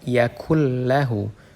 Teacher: Di situ ada nun sukun, kemudian setelahnya huruf lam. Dan di situ harus langsung dimasukkan ke huruf lamnya. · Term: idgham bilagunnah, idgham bila gunnah